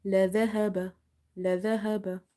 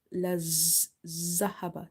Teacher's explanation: Dhal is again from the tip of the tongue when it touches the inner edges of your top two front teeth. So you have to control the tongue.